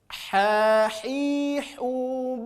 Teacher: untuk huruf H keluar dari tengah-tengah tenggorokan